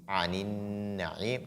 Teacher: nun mushaddada. Il faut donc faire ce qu'on appelle la ghunna